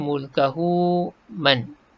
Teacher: Nun mati jumpa ya, idgham ma'al gunnah. Memasukkan ya ni ke dalam nun mati. Jadi man jadi mai, masuk ya terus berserta dengung.